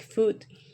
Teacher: the vowel U like foot is a high back rounded vowel